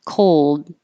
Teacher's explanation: When I make the D, then all the air stops coming out of my mouth. Cold. You won't hear the D if you hear it after, if it's the last word in the sentence or if it's before a consonant.